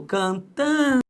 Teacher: E quando eu falo cantamos, a sílaba tônica é o tan.